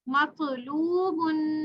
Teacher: یاد رہے اس پہ ساکن ہے تو اس پہ کلکلا بھی ہوگا طا کے اوپر